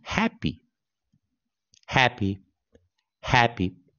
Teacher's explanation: 我们的重音在第一个音节，落在第一个音节